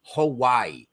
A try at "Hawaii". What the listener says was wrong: It's Hawaii. You almost. No, you said Hawaii. Well, there is a discernible E as the last vowel sound in the name of Hawaii.